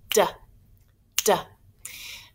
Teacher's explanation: D makes a short sound. We can't continue the duh sound. It's just quick. It's short.